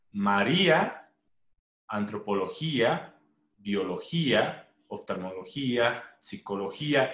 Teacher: Estas llevan tilde porque terminan IA. Mayor elevación de voz en la I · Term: hiatos